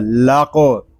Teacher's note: لام باریک قاف پر، قاف ساکن ہے، اس میں کلکلا بھی کریں گے